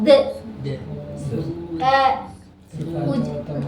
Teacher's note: Ujung lidah dengan pangkal gigi seri atas kan, tempel. De langsung menjauh kayak bola pinball. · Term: syiddah